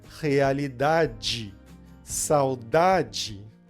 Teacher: como esse e é a última letra da palavra então ele vai ter o som de i